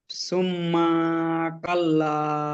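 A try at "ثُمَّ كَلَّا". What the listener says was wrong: আবার আপনি মা টানছেন, সুম্মা কাল্লা। কথা বুঝছেন আপনি কোন জায়গায় আপনার টান হচ্ছে?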